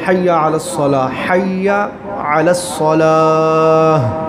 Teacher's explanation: اینڈ پہ ہا کی آواز آتی ہے، اور شروع میں حلقی ہائے